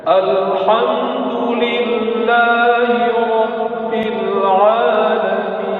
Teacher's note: Karena makhraj ain bukan khusyu' tetapi dari tengah-tengah tenggorokan.